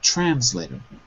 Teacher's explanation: So the stress is trans, first syllable.